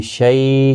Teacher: شیء ہے تھوڑا نرمی کے ساتھ، آدھے الف کی مقدار کے برابر کھینچ کر پڑھیں گے